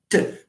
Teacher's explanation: there is a blockage of the air when you say t because the air does not flow so this is a stop